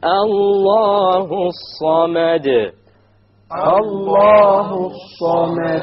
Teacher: which means we drop the lam when we have the alif lam there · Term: solar letter